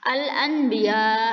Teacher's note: Jadi seakan-akan nun saat bertemu dengan ba ini seperti terdengar di telinga kita seperti kita mengucapkan huruf mim ya, seperti mim. Tapi bukan al-anbiya, tidak dihilangkan sama sekali nunnya ya, tapi masih ada terdengar sedikit al-anbiya. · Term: iqlab